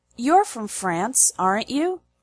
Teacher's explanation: you need confirmation, we use a high, low, high intonation.